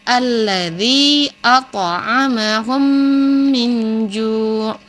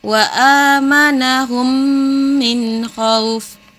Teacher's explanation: Jadi mim mati bertemu dengan huruf mim. Cara membacanya memasukkan huruf mim ke dalam huruf mim disertai ghunna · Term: idgham mutamatsilain